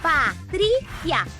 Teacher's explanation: A mais forte é a penúltima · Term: sílaba tônica